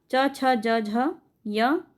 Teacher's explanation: जिन इस व्यंजन के उच्चारण में जिह्वा का अग्रभाग कठोर तालु को स्पर्श करता है उसे हम तालव्य व्यंजन कहते हैं